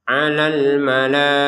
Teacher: Karena kita berhenti maka terbacanya sebagai huruf ha. Alal malaikah huruf ha.